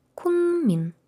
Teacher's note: Ну і на кінець кукмін. Кукмін знову к, знову після неї м, то буде кунмін.